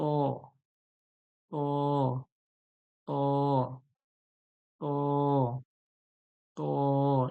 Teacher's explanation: সামনে দাঁতের গোড়ায় জিভের আগাটা লাগান, উপরের সামনে দাঁতের গোড়ায় লাগালেই উচ্চারণ হয়ে যাবে